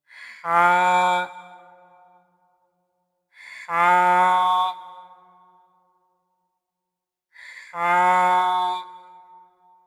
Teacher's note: یہ حرف حلق کے درمیان سے ادا ہوتا ہے۔